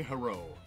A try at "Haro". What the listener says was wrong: I don't think that's how you pronounce Haro. It's probably more with a U sound, but...